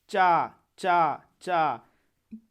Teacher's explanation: चा जब बोलिएगा तालु संपर्क होगा।